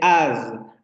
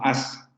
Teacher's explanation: hay una ligera vibración al final